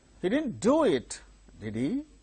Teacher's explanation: this is ordinary statement tag question did he there again Rising tone